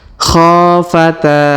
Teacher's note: khofata huruf ko kita panjangkan dua harakat karena Alif di depannya huruf ta kita panjangkan dua harakat karena Alif di depannya